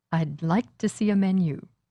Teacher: Hear the glottal stop in I'd and like. This sounds like the contraction for did.